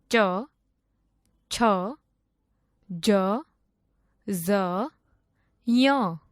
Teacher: જે વર્ણોનું ઉચ્ચારણ તાળવા માંથી કરવામાં આવે તેને તાલવ્ય વર્ણો કહે છે